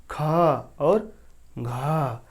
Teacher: बोलने में हमारी मुख से ज़्यादा अधिक हवा निकल रही है, इसे महाप्राण कहा गया है। हमारे मुख से बोलने में ज़्यादा सांस की प्रयोग हो रही है, ये का वर्ग।